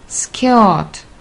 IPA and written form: skə:t (skirt)